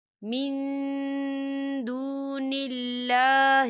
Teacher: ہم نون ساکن کی آواز کو ناک میں چھپائیں گے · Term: اقفا